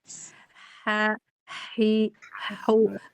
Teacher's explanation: yang dipersempit jalur nafasnya itu kan yang H, yang kecil, yang di tengah tenggorokan itu, yang bentuknya begini baru dia ha, hi, hu.